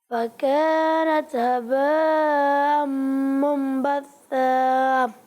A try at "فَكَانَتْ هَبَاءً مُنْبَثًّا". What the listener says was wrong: ماشاء اللہ اچھی کوشش کی آپ نے، لیکن بیٹا یہاں پر مد متصل ہو رہا ہے، ٹھیک ہے؟